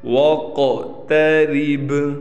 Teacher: را کو ہم بالکل باریک پڑھیں گے، اس با پر بھی قلقلہ ہوگا